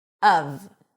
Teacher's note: it's pronounced when emphasized of, with a cup sound and a V sound. Even though it's spelled with an F, it's a V.